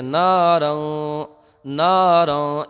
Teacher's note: تو یہاں پر تنوین کے بعد میں حروف اخفاء میں سے ذال آیا ہے، تو یہاں پر اخفاء ہوگا، یعنی تنوین میں گنہ کر کے پڑھیں گے